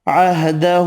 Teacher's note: چھوٹی مد تین الف کی مقدار میں کھینچ کر پڑھیں گے